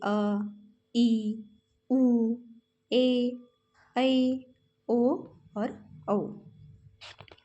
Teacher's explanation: इनके उच्चारण में ह्रस्व स्वर से लगभग दोगना समय लगता है। अर्थात दो मात्रा का समय लगता है। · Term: दीर्घ स्वर